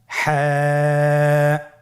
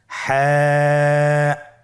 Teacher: হা হরফটি উচ্চারিত হবে কণ্ঠনালীর মধ্যখান হতে। গলা চিপে ধরে আপনি উচ্চারণ করুন।